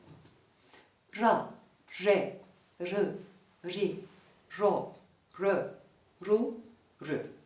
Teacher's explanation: dil kenarı arka dişlerden başlayarak üst diş köklerine değer dil ucu İsa ön Üst dişlere yaklaşır ve oluşan kanalda titrer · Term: R sesi